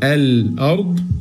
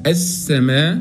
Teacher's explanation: فيبقى اللام اللي عليها سكون مظهره واللام اللي ما عليها سكون مدغمه